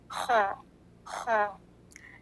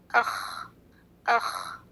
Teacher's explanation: जब हम खांसते हैं हलक में जहाँ खराश महसूस होती है ये वो जगह है, इसलिए जब ख कहेंगे तो उससे थोड़ी सी खराश के साथ अदा करेंगे, अख अख। हलक के इस हिस्से को अरबी में अदनल हलक कहते हैं।